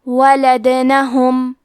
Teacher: کلمت ولدنہم میں حرف دال پہ جزم ہے، یہاں دال کا حکم ہے قلقلہ، تو ہم یہ حرف کو ہلاتے ہوئے یہ کلمہ کو پڑھیں گے۔